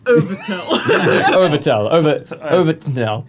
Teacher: There's a glottal stop.